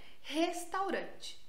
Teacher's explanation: Principalmente o R, né? Que a gente nem usa a língua para falar o R dentro do português.